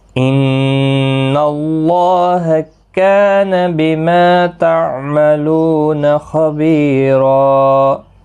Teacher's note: اللہ کا لام پر پڑھا جائے گا کیونکہ پچھلے حرف کے اوپر زبر ہے